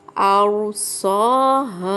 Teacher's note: سا الف کھڑا زبر ہے، کھینچ کے پڑھیں گے. ہا الف مدہ، کھینچ کے پڑھیں گے.